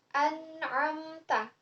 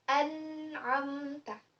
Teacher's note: nun mati bertemu dengan huruf ain. Itu dibaca idhar, jelas. Nun matinya dibaca ya.